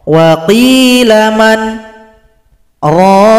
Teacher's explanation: Jadi setelah baca man tahan nafas, kemudian baru baca raqa. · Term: sakta